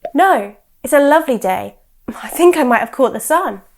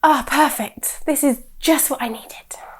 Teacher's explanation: The tone we use is very flat, even though our words are very strong.